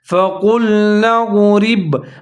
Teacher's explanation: ساکن ہے، نون کے ساتھ ملا کے پڑھیں گے، فَقُلْنَا اضْرِب، را باریک پڑھا جائے گا کیونکہ اس کے نیچے زیر ہے